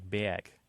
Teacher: the linguists and the phoneticians would say it's being lowered and backed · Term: vowel shift